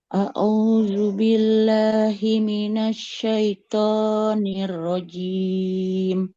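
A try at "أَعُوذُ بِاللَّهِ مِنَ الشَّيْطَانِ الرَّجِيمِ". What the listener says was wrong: Jangan au tapi a'udzu. Ada huruf ain, ada huruf hamzah dan huruf ain. A'udzu.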